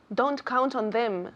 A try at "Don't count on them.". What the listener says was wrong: Con la lengua más arriba. Don't. Es casi como una T. Don't.